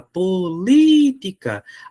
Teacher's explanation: a sílaba tônica é a antepenúltima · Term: proparoxítona